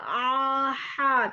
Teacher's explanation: Dari tengah tenggorokan. Dari tenggorokan bagian tengah, ya. Nah, tenggorokan tengah.